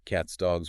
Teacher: Voiceless t in cat leads to voiceless s. Voice g in dog leads to voice z. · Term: assimilation